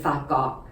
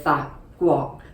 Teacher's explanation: I've said gwok and also gok because in the so-called lazy pronunciation, a lot of times when people say the gwok, they'll drop the GW in favor of like a GOK, just a gok.